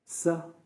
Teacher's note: You're touching your tongue to the upper front palate.